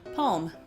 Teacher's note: So you actually put the L in there.